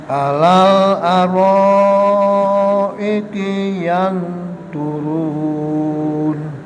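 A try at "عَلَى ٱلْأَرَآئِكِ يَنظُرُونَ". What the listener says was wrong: Ainipun, Mbak. Terus iannya kirang dengung. A ya, ain nggih. Alal aro beda nggih. A pada ala kate a pada aro. Itu beda, yang satu ain, yang satu hamzah.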